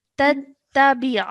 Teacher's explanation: Over here, the Maddul Kabir is found over here. So we have to stretch our sound out and join the ni sound at the end